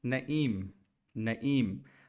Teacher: आखिर में आपके एम पे होंठ गोल बंद हो रहे हैं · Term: मीम